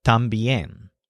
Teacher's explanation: But to say too or also, he uses the word también, which means also. So notice this word has the stress on yen, but it has the unstressed syllable tam